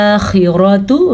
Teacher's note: खौ इस तरीके से अदा होगा, इसको हा या खा नहीं पढ़ सकते, खौ पुर भी पढ़ना है, क्योंकि ये उन 7 हरूफ में शामिल हैं जो हमेशा पुर पढ़े जाते हैं।